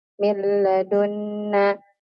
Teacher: نون ساكنة مدغمة في اللام مفتوحة بغنة حركتين